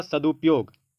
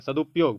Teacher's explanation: जब आप सदु बोलिएगा वहीं पर ह्रस्वकार खत्म हो गया उसके बाद प शुरू होगा